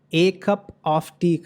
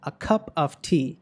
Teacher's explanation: సో ఇక్కడ చూసినట్లయితే ఈ ఇండెఫినెట్ ఆర్టికల్ని ష్వాగా పలకాలి.